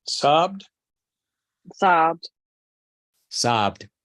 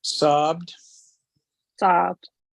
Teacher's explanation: Presten atención a que es un poco extendido el sonido de la vocal. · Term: sonido prolongado